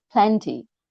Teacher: first syllable is stressed